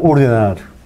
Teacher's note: los hablantes pueden pronunciar ordenar tanto con la oclusiva o con la fricativa. Eso se llama alternancia libre, porque no hay ninguna condición que elige la selección de un alófono.